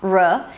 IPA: rə